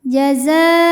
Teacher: Kemudian hamzahnya u pada kata jazau. Maka zai dipanjangkan boleh empat boleh lima harakat.